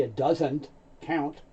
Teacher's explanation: very often the T sound is so light you don't hear it it may not even be spoken